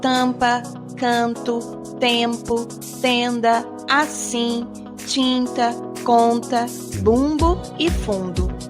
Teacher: Já os dígrafos vocálicos são aqueles que representam a nasalização das vogais através das letras M ou N